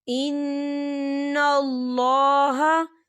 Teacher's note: نون مشدد ہے تو یہاں پر غنہ ہوگا اور اللہ کا نام موٹا پڑھا جائے گا، پر پڑھا جائے گا، کیونکہ اللہ کے نام سے پہلے زبر ہے.